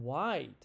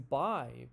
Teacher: My tongue moves from the bottom to the front, bottom, middle to the front, up.